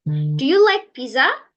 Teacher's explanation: in closed question sentence, at the end of the sentence, the tone of a voice will rise. So it can be said the closed questions is used rising intonations.